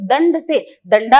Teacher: दवात का द है वो ड में और ध में बदलता है